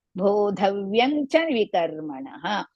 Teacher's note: That is vyam will go and it will become vyang